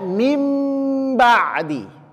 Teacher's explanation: nun sukun bertemu dengan huruf ba tapi membacanya dipalingkan ke huruf mim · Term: iqlab